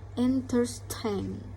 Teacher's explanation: Nah, di sini juga udah ada tanda kutip satu itu di tengah-tengah sebelum S dan setelah T. Jadi stressnya itu adalah tain, di bagian tainnya.